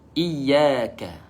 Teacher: iyyaka, dia bunyi sedikit merendah ke bawah